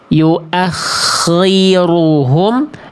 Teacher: Jadi bunyi kho-nya terlalu tebal, pangkal lidahnya terlalu kuat sehingga bunyinya betul-betul tidak terasa nisbi, tidak terasa tafhim nisbi, tapi tafhim saja jadinya. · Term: terlalu tebal maksimal